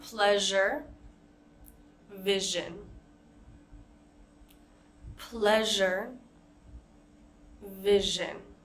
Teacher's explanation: Our next sound is this zh sound. Remember, it's not exactly a smooth sh sound, and it's not exactly a z sound. It's somewhere in between.